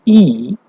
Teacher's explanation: as far forward and as high in the mouth as possible no friction is produced and the position of the lips is spread